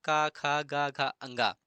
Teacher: क वर्ग कंठ के अंतर्गत आते हैं